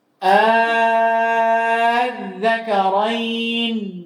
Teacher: dia baca tashil dengan membaca hamzah yang kedua antara hamzah dan antara alif wala madda fi dan tidak dipanjangkan